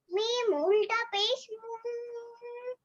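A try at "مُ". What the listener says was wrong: उल्टा नहीं हो पेश, सीधा ही हो ऐसे। जी, फिर लंबा नहीं होगा।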